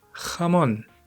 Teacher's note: it has a final syllable stress, which just sounds really nice in Spanish